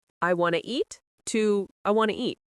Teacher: You barely hear the break. It's like one word, want to eat.